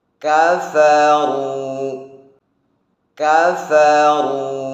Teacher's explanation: Perhatikan hamsnya huruf kaf dan hamsnya huruf fa.